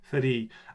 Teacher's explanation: there's a tendency for the vowel to get lengthened instead, even though it's the R sound that should have been lengthened